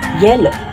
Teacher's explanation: Y, na kung saan ang paraan ng artikulasyon ng letrang ito ay malapatinig at may tunog, at ito ay napabilang sa punto ng artikulasyon na palatal at napabilang sa pangalangala.